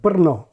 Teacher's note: the Czech city of Burno written b r n o which has a stressed trilled R